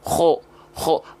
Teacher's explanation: Maaf, dia punya sifat isti'la. Ya, ketika melafalkan kho, pangkal lidahnya diangkat. Maka dengan otomatis bunyi vokal A ketika fathah akan menjadi O tanpa harus monyong.